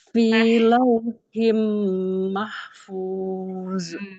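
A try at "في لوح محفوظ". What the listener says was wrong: Memnya kurang lama. Kemudian hanya dialirkan panjang, lebih panjang itu daripada tawasud, dia rokhawah. Iya, mahful, bukan fuz. Mahful. Iya, mahful. Seperti zal. Jadi ujung lidahnya nempel di ujung gigi seri atas di huruf wa sukun itu ya.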